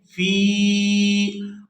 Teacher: تو یہاں فا کو یا ساکن کے ساتھ ملائیں گے تو کھینچ کر ادا کریں گے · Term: یا مدہ